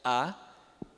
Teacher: Aí você também tem o A, esse lá de baixo, que é o vocóide central baixo aberto, A, é o nosso A aberto